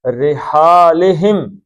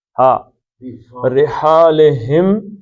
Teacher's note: ہا کے اندر آپ کی تھوڑی سی سانس بھی آنی چاہیے. ہا رحالہم، اب یہ جو ہم ہے یہ سینے کی جانب جو آپ کا گلا ہے وہاں سے نکلے، اور یہ جو اوپر کا گلا ہے ہا اس سے نکلے.